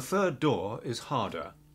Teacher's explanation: Brits don't say hard or harder as the R is followed by a D